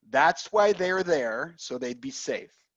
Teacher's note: That's why they are there, so they would be safe. And we contract they are to there, which sounds just like there.